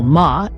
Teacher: say the syllable ma in a highlevel tone and you're saying mother